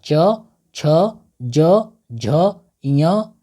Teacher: जिसका उच्चारण तारू से होता है